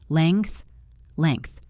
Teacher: The correct pronunciation holds the NG together as one sound, like in the words sing or ring or bring, and then the TH follows naturally.